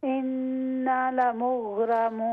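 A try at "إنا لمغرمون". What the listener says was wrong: نہیں نا پہ الف مدہ ہے تو وہاں پر لمبا کریں گے ہم.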